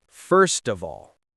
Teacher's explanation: The V sound in of connects everything.